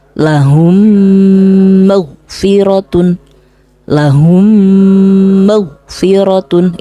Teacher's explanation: ketika ada mim mati bertemu dengan mim ini juga harus dibaca dengung dengan tempo dua harakat contoh lahum magfiratun lahum magfiratun itu tempo dengungnya dua harakat hukum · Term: Idam mimi